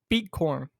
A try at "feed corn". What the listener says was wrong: You're saying beet, not feed. Feed. Is it not feed corn?